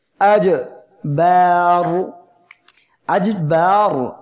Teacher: এর জিম জিব্বার মধ্যখান তার বরাবর উপরে তালুর সঙ্গে লাগিয়ে উচ্চারণের সময় আওয়াজ বন্ধ ও শক্ত হবে